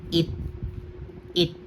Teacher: dahil nasa patchim siya hindi na ch yung magiging tunog niya kung hindi letter T na lamang. Okay na. Walang hangin. So ang basa dito it.